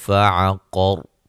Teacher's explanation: کریں گے، مد اصلی ہے، قاف کو موٹا ادا کریں گے، را پر جب وقف کریں گے را کو موٹا ادا کریں گے